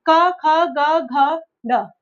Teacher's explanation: क वर्ग का कंठ से, गले से उच्चारण होता है। जब हम कुछ बोलते हैं तो वो क्या है, हमारे गले से आवाज निकलती है।